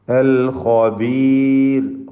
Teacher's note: അൽ ഹകീമു, ഹ അതിൻ്റെ മഖ്റജിൽ നിന്ന് തൊണ്ടയുടെ മധ്യത്തിൽ നിന്ന് വ്യക്തമായി ഉച്ചരിക്കണം. അൽ ഖബീർ, ഖാഇനെയും പൂർണ്ണമായി തഫ്ഖീം കൊടുത്ത് ഉച്ചരിക്കുക.